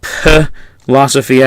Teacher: So it's not, strictly speaking, philosophia as much as it is philosophia, and you can hear the breathing out as the P is said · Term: aspirated P